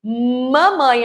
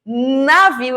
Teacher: Mamãe eu tenho a união dos meus lábios e navio eu não tenho essa união eu tenho a ponta da língua tocando a raiz dos dentes incisivos superiores